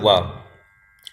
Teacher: दंतोष्ट, दंतोष्ट ध्वनि है, ठीक है, दांत प्लस ओठ